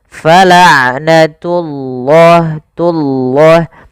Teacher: pada lafal ain sifat bainiyah tidak terlalu ditahan suara ainnya dan tidak terlalu dilepaskan. Fala'natullah, tullah, tunya jangan tebal, jangan fala'natullah, enggak, tapi dia fala'natullahi, baru lafal Allahnya tebalkan.